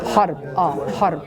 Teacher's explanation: It's easier to roll the R if it's a deeper A